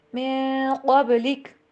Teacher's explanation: غنے کی آواز کو ناک میں لے کے جانا ہے، اس کو چھپانا ہے۔ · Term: اخفا